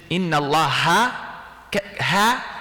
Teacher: where does ha live first part of the throat